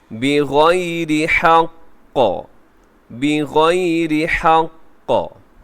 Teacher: یہاں وقف کریں گے، مضبوطی کے ساتھ وقف کریں گے کیونکہ آخری حرف کے اوپر تشدید ہے